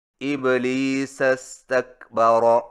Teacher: یعنی استکبر کا حمزہ گر جائے گا